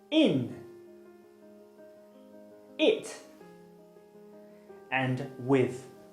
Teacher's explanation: your tongue is close to the top and the front of your mouth. Unrounded refers to your lips because they are stretched out as if you're smiling and not rounded. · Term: high front unrounded vowel